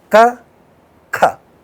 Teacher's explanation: ka is indicated as minus aspiration and kha is indicated as plus aspiration